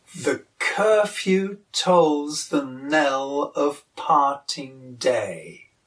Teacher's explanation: with a weak syllable followed by a strong one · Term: iamb